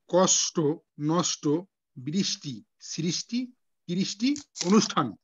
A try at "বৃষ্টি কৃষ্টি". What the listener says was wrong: না ওটা আপনি বারবার ভেঙে দিচ্ছেন যুক্ত বর্ণগুলোকে আপনি ভেঙে বলছেন বৃষ্টি কৃষ্টি বলছেন বৃষ্টি কৃষ্টি আবার বলেন বৃষ্টি বৃষ্টি